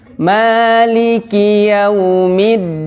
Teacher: Ma 2 harokat karena mad tabi'i